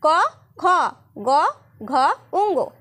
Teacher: এই ব্যঞ্জন ধ্বনিগুলি উচ্চারণের সময় জীভের পশ্চাৎ ভাগ কণ্ঠস্পর্শ করে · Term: কণ্ঠ ধ্বনি